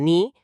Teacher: con la punta de la lengua arriba, detrás de los dientes, para la ni, que es alveolar